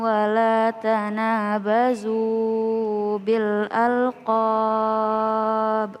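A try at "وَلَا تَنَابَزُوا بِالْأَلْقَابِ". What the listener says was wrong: Jangan kepanjangan. Tanabazu kepanjangan.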